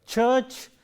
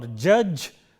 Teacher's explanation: Ch is voiceless, j is voiced. And these are also very important for us to note, because we have them in words like church or judge. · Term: affricates